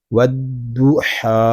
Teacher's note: اس کو پڑھیں گے دود پیش دو، ودو، ہا کھڑا زبر ہا، ودو ہا، ہا کو ہم ایک الف تک کھینچ کر پڑھیں گے کیونکہ ہا کے اوپر کھڑا زبر آ رہا ہے